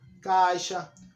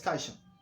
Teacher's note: o I quase não aparece, caixa. O I é o que menos tem a sua representação, a sua aparição. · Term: semivogais